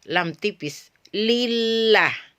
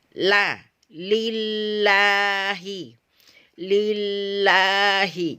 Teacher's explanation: Sama-sama hurufnya atau lisan depannya, ini bagian pinggir-pinggirnya berada di sini sama. Tetapi ketika kita melafazkan lam tipis, ya, lam tipis, lillah, pangkal lisan kita tidak terangkat, datar aja seperti ini, hanya ini yang diangkat.